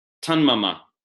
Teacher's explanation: Tut plus mama, tun mama. So the T has assimilated to the following nasal. Any nasal is going to make the T go to an N.